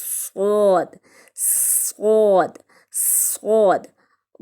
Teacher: زبان کی نوک اور اوپر نیچے کے دانت جب آپس میں ملتے ہیں تو صاد ادا ہوتا ہے